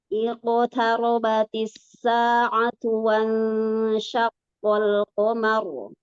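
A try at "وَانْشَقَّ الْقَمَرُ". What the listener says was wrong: Nah, yang tebal-tebalnya bagus. Di sini ikhfanya bukan uang, bos. Menuju ke huruf shin. Wansyaqqal qamaru.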